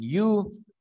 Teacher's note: The front of the tongue articulates with the hard palate. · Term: palatals